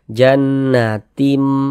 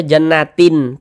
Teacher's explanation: cara membacanya tuh dengan merubah menjadi mim